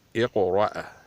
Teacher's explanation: اس سے قلقلہ بھی کیا جائے گا اور موٹا بھی پڑھا جائے گا